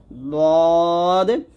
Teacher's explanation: দ মাখাজ জিব্বার গোড়ার কিনারা উপরের মারিতে লাগবে